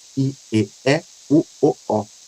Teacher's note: I, e, e, u, o, o, a, a mais baixa e a mais arredondada, mais aberta. E uma movimentação da língua da frente para trás, né? E e a gente percebe que a língua vai [Música] se afastando, né, dessa parte eh frontal para uma parte mais atrás da nossa boca.